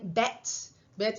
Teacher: Bet, esa vocal está aquí, está un poquito más baja. Es una vocal anterior, media